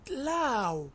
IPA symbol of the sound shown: aʊ